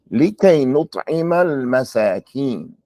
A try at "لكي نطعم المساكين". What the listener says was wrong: Okay, but don't stop after the alif lam. نطعم المساكين. لكي نطعم المساكين.